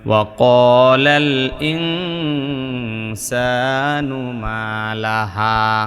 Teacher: ওয়াকালাল এক আলিফ টান, এক আলিফ পরিমাণ টান, কারণ জবরের পরে আলিফ আছে।